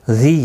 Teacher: ذی یا مدہ ہے، ایک الف کی مقدار کے برابر کھینچ کر پڑھیں گے